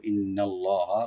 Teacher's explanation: ইন্নাল্লাহা, ইন্না হামজাকে রাইট দিবেন, নুনটাকে ডাবল করে আমরা ওয়াজিব গুণা করবো